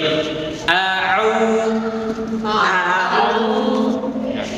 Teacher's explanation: Kalau tadi hamzah a, sekarang mah au di tengah. Jadi naik dari tempat hamzah naik ke tempat ain.